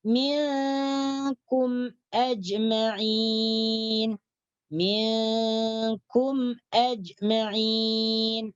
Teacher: Jadi cara membacanya izhar syafawi itu bunyi mim dibaca dengan jelas. Tidak ada dengung.